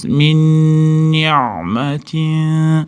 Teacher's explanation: Min ni'matinda g'unna kelyapti, ya'ni idg'om g'unna bilan kelgani uchun nundan nunga kirgizib ushlab turamiz.